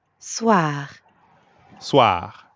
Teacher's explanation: But soir also ends in R. So we've got that really light gargling in the throat again.